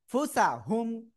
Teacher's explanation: নুন সাকিনের পরে ওই 15টা অক্ষরের একটা অক্ষর ফা আসছে আমরা কি করব নাকের ভিতরে নিয়ে গুন্না করব